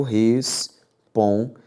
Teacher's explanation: A sílaba tônica é a penúltima, só que é terminada em qualquer coisa, diferente de a, e, o e em.